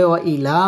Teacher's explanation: ওয়াও ঠোঁট গোল করে উচ্চারণ করতে হবে